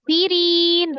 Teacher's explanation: ri-nya matobiyah, ada ya sukun sebelumnya kasroh di huruf ro kasroh dibaca tipis. Awalnya dua harokat, kemudian bertemu dengan satu huruf nun ya yang disukunkan karena wakaf menjadi mad arid li sukun.